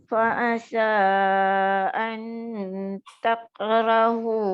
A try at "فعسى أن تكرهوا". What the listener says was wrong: Tebal tu. Jangan dia melekat tu, dia tak lekat.